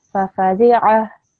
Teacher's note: Just with the ayn, can you try to pronounce it from your throat? So, fafadi'a.